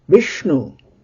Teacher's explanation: Now shnu, because there is a small u, shnu by itself is laghu, but just before shnu is vi, so Vishnu, then vi becomes dirgha because it precedes, it immediately precedes a conjoint consonant, shnu, those two. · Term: guru and then laghu